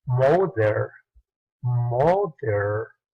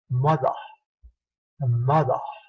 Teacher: Los británicos en ese dialecto británico, en el inglés británico, tienen un fenómeno que se llama R-less, que significa R-less sin la R final. Ellos al final de las palabras o después de vocales a la R no la pronuncian. Ellos le pronuncian como una schwa.